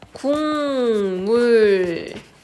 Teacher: 기억이 미음을 만나서 이응으로 소리 나는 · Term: 비음화